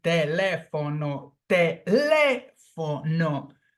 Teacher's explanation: The phonetic sound falls on the third syllable from the end. So this word is a proparoxytone word.